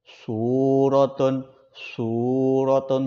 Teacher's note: Jadi tetap ada sedikit terdengar kayak orang bersiul.